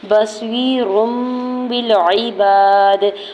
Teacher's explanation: را کی دو پیش کی تنوین کو میم میں بدل کے پڑھیں گے ، بصیر بالعباد، اور غنہ بھی کریں گے، باقی زیر کو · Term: اقلاب